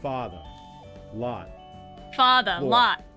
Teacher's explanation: for most Americans we got a split where lot belongs with Father